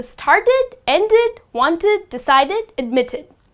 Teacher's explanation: the words that end with the sound of T and D well the correct way to pronounce the Ed would be ID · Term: the I D sound